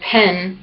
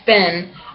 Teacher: p aspirated as in Penn & P as in spin are allophones for the phoneme / p / in english